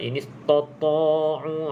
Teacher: Okey, ta dulu baru ta tu. Okey, sempurnakan ta yang nipis kemudian ta. Jangan terus jadikan dia tebal.